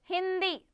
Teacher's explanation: जैसे हमारी नाक से आवाज आ रही है उसका उच्चार हमारी नाक से हो रहा है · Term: अनुस्वार